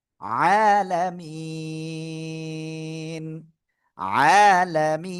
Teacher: এক আলিফ মাদের পরের অক্ষরে ওয়াকফ করলে তিন আলিফ টেনে পড়তে হবে, কিন্তু আপনার কি তার আগে এখানে সাকিন যদি না হয় তাহলে কাজ হবে না।